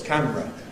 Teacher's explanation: I learned the word camera in its compressed form. 2 syllables, camera. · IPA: [ ˈkæmrə ]